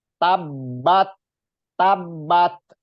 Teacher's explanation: di huruf ta huruf ta itu ada sifat Hames walaupun sedikit Hames itu artinya ada desisan kebocoran dari e nafas kita yang keluar ada angin